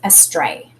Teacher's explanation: we put the emphasis on the stray part of the word and this a y is another long a sound okay so